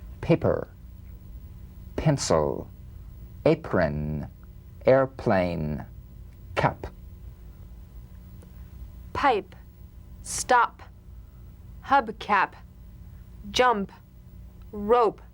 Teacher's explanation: unvoiced labial stop consonant the whispered tap of this drum beat p is played with a light springing apart of the lips just like for the bee